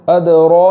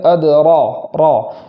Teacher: را کو پور پڑھیں گے۔ پور کرنے میں ہونٹوں کا سہارا نہیں لیں گے، جیسے ادرا نہیں پڑھیں گے بلکہ ادرا را اس طریقے سے پڑھیں گے۔